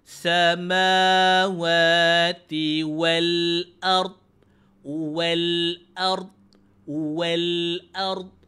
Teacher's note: Ard ada ra ada dot. Dod dalam kondisi yang menahan. Ra dalam kondisi yang getaran.